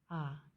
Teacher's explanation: This vowel has a low tone, so remember to lower your voice when pronouncing